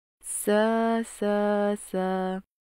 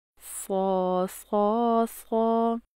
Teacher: سین کو باریک اور صاد کو موٹا پڑھنے کی مشق کرتے ہیں